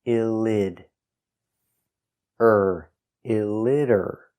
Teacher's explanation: the T is pronounced with a D between vowels.